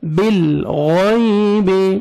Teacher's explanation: ربهم بالغیب، لام کو آپ نے ہلانا نہیں ہے، بال ایسے نہیں پڑھنا ہے، بالغیب غلط، بالغیب، غین کو موٹا کر کے پڑھنا ہے، یا لینا ہے، نرمی سے ادا کریں گے